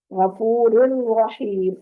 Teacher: غفور الرحیم، غفور والا را پڑھتے ہوئے ہونٹوں کو چیریں گے، اسماعیل والے اسٹائل میں لے کے جائیں گے تو باریک پڑھا جائے گا، اور اگلے را کو پڑھتے ہوئے آپ نے موٹی آواز کے ساتھ اس کو پڑھنا ہے